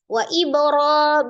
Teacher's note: ba sukun, qalqalah dipantulkan, qalqalahnya sughra karena di tengah ya, qalqalah kecil.